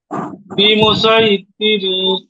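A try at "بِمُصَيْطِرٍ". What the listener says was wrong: সাই না, সই বলেন, সদ ইয়া জবর সই। তিরিন, হ্যাঁ টান নেই, তিরিন। আর থেমে গেলে তীর, বিমু সই তীর, ঠিক না?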